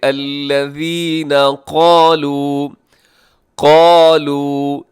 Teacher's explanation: اس میں قاف موٹا رکھیے گا، ساتھ الف ہے، وہ بھی آپ نے اسے بھی پر پڑھنا ہے۔